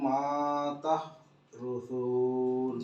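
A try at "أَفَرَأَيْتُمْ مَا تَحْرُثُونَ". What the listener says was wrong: Bagus, tinggal mimnya panjang sedikit aja. Afara'aitum matah.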